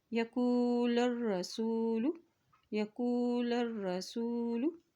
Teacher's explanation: लाम की ज़बर को रा के साथ मिलाएंगे क्योंकि रा के ऊपर शद है।